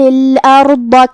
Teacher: ضاد کی ادائیگی زبان کے کروٹ اور اوپر کے داڑھوں کی جڑ سے ہے